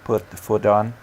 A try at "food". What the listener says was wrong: You're so close. Just watch that foot versus food sound. Just that sound at the end.